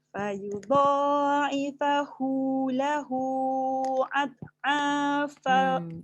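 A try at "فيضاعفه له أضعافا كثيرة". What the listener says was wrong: Jaga kat situ hamzah. Dia jadi ain. Jangan out.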